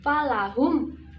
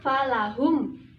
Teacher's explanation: mim sukun bertemu dengan alif maka dibaca satu harokat falahum harus jelasnya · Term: izhar syafawi